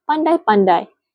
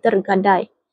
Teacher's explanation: mempunyai diftong ai kerana dalam satu suku kata sahaja terdapat dua vokal iaitu vokal AI.